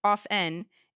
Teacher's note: The pronunciation without the t sound, off n, is more common and widespread today, especially in American English. However, pronouncing the t is not wrong, just a bit more traditional or formal, so you can choose whichever you prefer.